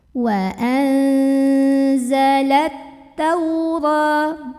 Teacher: Karena nun sukun ketemu zai, maka nun sukunnya dibaca samar-samar menuju huruf zai sambil ada dengungannya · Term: ikhfa